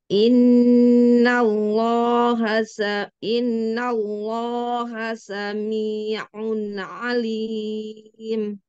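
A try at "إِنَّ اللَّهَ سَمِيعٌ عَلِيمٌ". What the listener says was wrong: Iya, ainnya gak usah ditarik-tarik. Sami'. Gak usah gitu. Sami'un. Iun. Gak usah ditarik, dia pinter kok, ya. Sami'un alim. Sami'un. Mi, kecekek, mi. Coba ringan.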